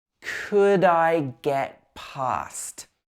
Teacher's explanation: we don't pronounce the t on the end of get here